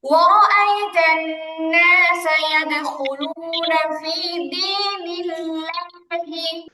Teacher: একদম স্বরের মধ্যে পুরো একদম হা হবে না, আবার একদম এও হবে না, মাঝামাঝি থাকবে, জবরের উচ্চারণটা মাঝামাঝি থাকবে।